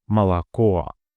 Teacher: The first O undergoes second degree reduction, functioning as an indistinct and very short filler vowel sound known as a schwa, like in banana.